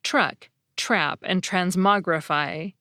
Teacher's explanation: for many speakers, the T is actually pronounced more like a CH sound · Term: the CH sound